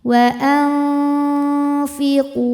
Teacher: Cara membunyikannya nun disamarkan ke fa disertai dengung. Jadi ujung dua gigi seri atas sudah menyentuh bibir bawah bagian bagian dalam ya. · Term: ikhfa hakiki awsat